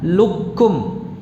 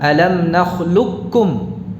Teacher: Ya, langsung ke kaf. Qafnya tidak terucap sama sekali. Ini namanya idgham kamil.